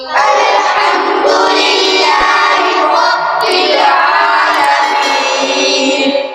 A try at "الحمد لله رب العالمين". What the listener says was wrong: حا से निकालो हा. الحمد لله رب العالمين.